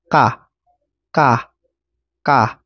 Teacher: simple lang siya walang hangin pero short very short lang siya